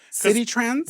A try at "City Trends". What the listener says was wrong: When you say it, it sounds like you're saying CD Trans.